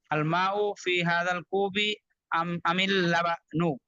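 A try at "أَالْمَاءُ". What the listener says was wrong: এখানে কিন্তু হামজা দুইটা কিন্তু। আল মা উ একটু টান দিয়ে পড়তে হবে, হ্যাঁ।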